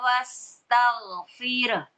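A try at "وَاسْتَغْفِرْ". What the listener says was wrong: Nah, haknya kurang. Wastaghfir.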